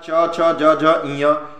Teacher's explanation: च छ ज झ का उच्चारण तालु से होता है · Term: तालव्य